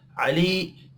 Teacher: अली या मद्दा है, एक अलिफ के बराबर खींच कर पढ़ेंगे।